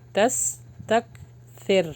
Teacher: را کو باریک روکیں گے